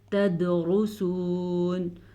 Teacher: را کو پر پڑھیں گے را پہ پیش کی وجہ سے